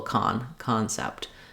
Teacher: I do have the vowel there, but it's not reduced to a schwa, but it's also not as long as in the first syllable